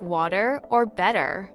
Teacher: In American English, the R sound is often pronounced more strongly, especially at the end of words like car or far. In British English, on the other hand, the R sound is softer or sometimes even dropped altogether in words like water or better.